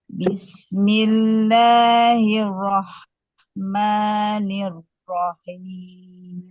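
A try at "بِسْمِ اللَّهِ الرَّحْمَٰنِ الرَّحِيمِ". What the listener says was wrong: Double R-nya jangan buru-buru. Sama dengan double L sama.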